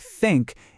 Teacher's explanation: it's just a puff of air. Your tongue is between your teeth, but there's no vibration. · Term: th sound